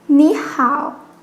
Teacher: it's a third tone for knee and hao